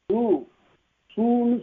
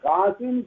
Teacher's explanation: சூ சூன்னு சொன்னா உங்களுக்கு இதழ் குவியும் ஆனால் இங்க காசுன்னு சொல்லுகிறபோது இதழ் குவியல அப்போ ஒரு மாத்திரை பெறவில்லை என்று பொருள் பிறகு எவ்வளவு மாத்திரை பெற்றது அரை